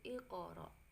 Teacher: Nah, qaf sukun itu adalah bacaan qalqalah. Jadi dibaca memantul, bukan iqra tapi iqra.